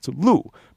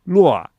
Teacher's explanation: lu in standard Mandarin it's lu. But I always heard taxi drivers say luo.